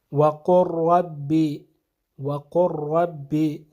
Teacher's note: جیسے وَقُرْ رَبِّ، وَقُرْ رَبِّ، تو یہاں پہ حرف لام قل میں جو حرف لام ہے یہ ربی کا جو حرف را ہے اس میں ادغام ہو جائے گا، اور لام کی آواز نہیں آئے گی بلکہ رب کا جو را ہے اس کی آواز آنی چاہیے